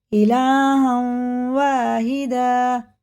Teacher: سب جگہ یہاں اس نون میں واو میں غنہ ہوگا کیونکہ تنوین کے بعد آ رہا ہے، نون کے ساکن کے بعد آ رہا ہے تو غنہ ہی ہوتا۔